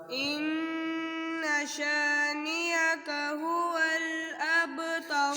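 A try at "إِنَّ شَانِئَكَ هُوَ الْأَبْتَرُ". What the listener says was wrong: شانئک حمزہ صحیح پڑھو حمزہ سخت کرو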